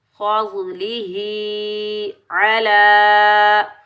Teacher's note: फ़ज़लिही अला, आइन के ऊपर ज़बर, बगैर खींचे पढ़ेंगे। लाम के ऊपर खड़ा ज़बर आने की वजह से इसको 1 अलिफ की मिकदार में खींच कर अदा करेंगे। या के ऊपर कोई आराब नहीं है, तो या को हम नहीं पढ़ेंगे, नहीं अदा करेंगे।